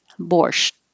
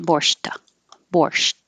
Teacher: I'm going to hold the T, borscht, and not release it, borscht, borscht.